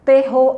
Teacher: terror é uma palavra oxítona a sílaba tônica é a última